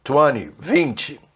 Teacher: os americanos não gostam de pronunciar esse T, aí já parte do N direto para o Y e falam 20